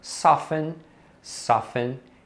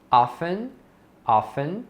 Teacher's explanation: Você vai perceber que isso vai acontecer com outras palavras que têm esse padrão, o T seguido de EN. Então nesses casos, nessas palavras, você não pronuncia esse T